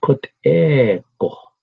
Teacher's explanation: there's a slight W sound after the G. Go, go.